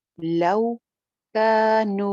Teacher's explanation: रॉ मोटी है, लव, वाउलीन पाउच के वजन पे, लव कानू, का एक अलिफ लंबा, नू भी एक अलिफ लंबा , दोनों एक एक अलिफ लंबे हैं, कानू यअलमून, य, अगेन